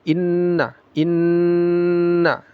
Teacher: Nun yang bertasdid kita ghunahkan inna. Inna lama ya, jangan kita cepatkan saja. Tekanannya tidak kuat tetapi ghunahnya yang lama. · Tekanannya tidak kuat, tetapi gunnahnya yang lama.